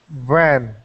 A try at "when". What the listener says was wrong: So that W sound, the W sound is pronounced W, not V. When. So when. And when the way that I try to help my students remember is when you see that V, it is your teeth hitting your lips. V. V. V.